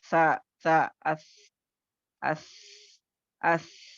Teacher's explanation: Tip of the tongue ऊपर के दो दांतों से थोड़ी बाहर लेकर आती, जिसकी वजह से साउंड तो आ रहा है लेकिन साउंड में क्या हो रहा है, पस्ती आ रही है, और पस्ती आने के साथ साथ क्या हो रहा है, लाइट आकर आपको विस्परिंग या सांस का जारी होना महसूस हो रहा है। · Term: हुर्फे महमूसा